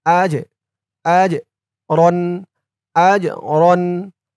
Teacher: المؤمنين وسوف يؤتي الله المؤمنين أجرا আজ হামজা দিয়ে জিমকে ধরবে জিমটা কলকলার হরফ ধাক্কা দিয়ে পড়তে হবে